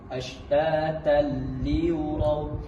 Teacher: tanwin bertemu dengan huruf lam. Langsung memasukkan tetapi tidak dengung dengan dikejutkan dengan kuat sedikit. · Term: idgham bila gunnah